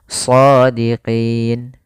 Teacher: maka pada lafal qi itu kita boleh memanjangkan 2 harokat atau 4 harokat atau 6 harokat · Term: mad arid disukun